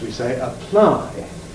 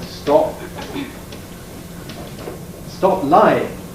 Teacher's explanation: That P is strongly aspirated, which must therefore indicate that it's initial in the syllable. Because if you've got something like stop lying, with a P, all right, stop lying.